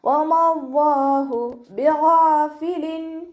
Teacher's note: ഗൈനിൻ്റെ മഖ്റജ് അദ്നൽ ഹൽക്കാണ്, തൊണ്ടയുടെ ആദ്യ ഭാഗം,